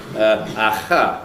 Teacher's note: quite a lot of people can make this velar fricative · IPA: [ɑxɑ]